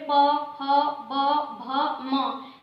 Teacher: ऐसे बोलने पे पता चला दोनों ओठ आपस में मिल रहे हैं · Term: ओष्ठ वर्ग